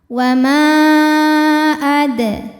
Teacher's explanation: Mad tabi'inya alif didahului fathah pada kata pertama yaitu ma, hamzah alif dengan harokat fathah pada kata kedua adraka, maka maknya dipanjangkan, boleh 4 boleh 5 harokat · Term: mad jaiz munfasil